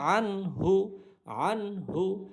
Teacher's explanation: আন নুনটাকে স্পষ্ট রাখবো, গুণনা করবো না, কারণ হা হইল ইজহার হরফ। ইজহার হরফ 6টি, হামজা, হা, আইন, হা, গইন, খ, এই 6টি হরফের কোনো একটি হরফ থাকলে গুণনা ছাড়া স্পষ্ট করে পড়তে হয়।